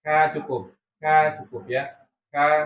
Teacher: Sama di situ tempatnya. Cuman bedanya kaf itu harus ada udara yang keluar, tapi juga tidak terlalu banyak ya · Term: sifat hamsnya